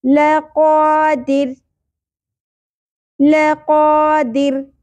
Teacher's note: را ساکن ہو جائے گا لیکن باریک پڑھا جائے گا کیونکہ را ساکن سے پہلے اگئی زیر